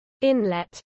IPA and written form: ˈɪnlɛt (inlet)